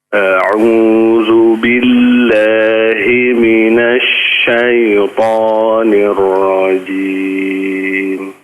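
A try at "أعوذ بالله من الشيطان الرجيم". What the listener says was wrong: ya coba huruf zal tadi sudah disampaikan bahwa apa? Ujung lidahnya apa? Dikeluarkan ya, coba. Ujungnya saja ya, sedikit. Zal. Lidahnya di dalam atau kurang keluar.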